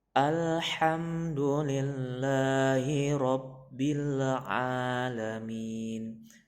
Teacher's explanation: Terus lagi ro-nya itu tebal, jangan tipis karena itu ada baris fathah.